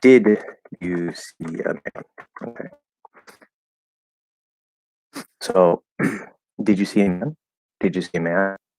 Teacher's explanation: without any special context, you're going to go up at the end. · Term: question intonation